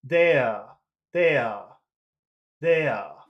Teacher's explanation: standard UK accent where they don't pronounce the r at the end of a word most of the time